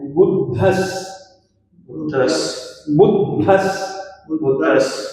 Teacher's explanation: द और ध मिला हुआ है, बोला जाएगा ये ध।